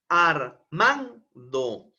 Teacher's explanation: una mayor entonación de voz una mayor vocalización un mayor impulso de voz es la sílaba man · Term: acento